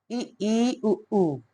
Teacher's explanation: वे स्वर होते हैं जिनके उच्चारण में मुख विवर लगभग बंद रहता है